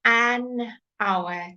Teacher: it also begins with an H but the sound we don't say the H the sound is a vowel